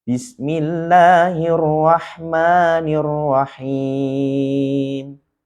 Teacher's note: lagu Ros tiga nada datar naik turun datar naik turun